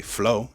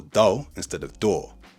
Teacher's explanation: we do not drop the R at the end of a word or change it into an A or an AH, whereas in AAVE, that tends to be the case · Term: R-less